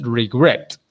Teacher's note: the accent, the stress, is on the second or last syllable